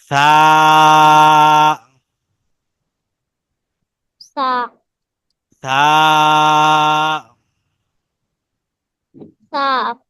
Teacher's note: সাটা উচ্চারিত হবে জিহ্বার আগাটা উপরের দাঁতের আগার সাথে লাগিয়ে, ঠিক এমন ভাবে।